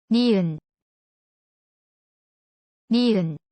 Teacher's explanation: When you say it, the tip of the tongue touches the back of the upper front teeth and gums.